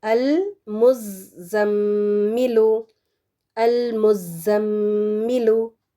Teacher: ابھی میں نے بتایا تھا نا کہ نون مشدد میم مشدد دونوں پر ہی 2 حرکات کے برابر ہم نے لمبا کر کے اس کو پڑھنا ہے. یعنی میم کی آواز کو چھپانا ہے یا پھر ناک کے بانسے میں لے کر جانے تک کا اس کو جاری رکھنا ہے اس کی آواز کو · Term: غنہ